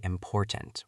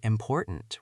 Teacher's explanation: I usually say important with a heavy T. But because I was chasing you, I said important with a glottal T.